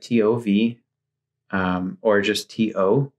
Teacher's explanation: without an h so a t and then a vowel afterwards for this type of a t without an h you would put your tongue against the back of your top front teeth